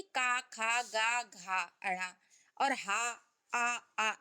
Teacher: जैसे का वर्ग यानी कि का, खा, गा, घा, अड़ा और हा, आ, इनके बोलने का स्थान क्या होता है? कंठ, यानी ये गले से बोले जाती है। चा वर्ग सा, या, सा, ई, तालब से, तलवे से मतलब।